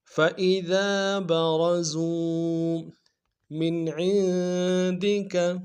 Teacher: را کو موٹا کر دیں گے، زا کو واو کے سامنے لائیں گے، واو مدہ ایک الف میں کھینچیں گے